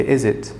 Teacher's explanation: Okay, so my intonation here went down. It's not a rising intonation, it's a falling intonation.